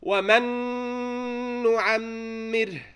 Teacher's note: We skip the first noon, go into the next noon, merge the first one into the next one, give one on the next one. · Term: idgham